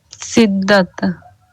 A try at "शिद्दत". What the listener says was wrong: नहीं सटा। शिद्दत, शिद्दत। नहीं, सट ही नहीं रहा है। शिद्दत, वहाँ वहाँ टच ही नहीं हो रहा वो जो सामने का जो दोनों दांत है उसके जड़ में जो आपकी ज़ुबान है वो वहाँ पे टच हो रही है।